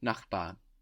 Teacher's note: It ends in a consonant. Doesn't sound like a consonant though. Sounds like an A, no?